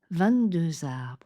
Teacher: on fait bien la liaison en Z